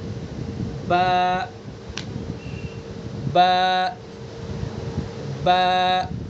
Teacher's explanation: با کا مخرج ہم نے پڑھا دونوں ہونٹوں کی تری والا حصہ، تو دونوں ہونٹوں کی تری والے جو حصے اس کو ہم ملائیں گے اور پھر ادا کریں گے